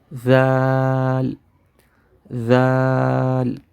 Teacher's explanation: ہم اپنی زبان کی نوک کو سامنے والے 2 دانتوں کے ساتھ لگائیں گے